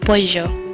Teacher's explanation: the body of the tongue comes close to the palate, leaving a space in the middle, allowing airflow without turbulence.